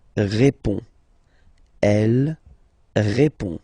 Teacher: final D is not pronounced. You only have this on nasal sound at the end.